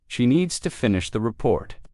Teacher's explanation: Stress needs and report and let the small words fall quietly. Good. This is exactly what makes your English sound like native speech.